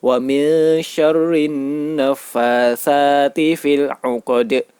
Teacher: huruf dal terletak di akhir ayat dan dibaca waqaf, maka dinamakan qalqalah kubro. Cara membacanya yaitu dipantulkan. seperti bunyi huruf E atau E, fil 'uqad.